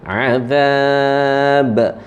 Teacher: Zal huruf nipis, ujung gigi, ujung lidah.